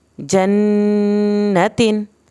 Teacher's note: نون کی شد پہ زیادہ دیر لگانی ہے